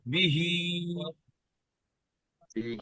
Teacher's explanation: হাটা গলার শেষ ভাগ থেকে উচ্চারিত হবে